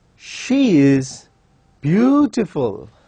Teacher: when someone is appreciating the beauty of that particular lady we use rising tune